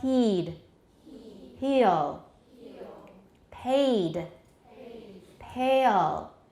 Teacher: The schwa is because we're moving way back to make that dark L.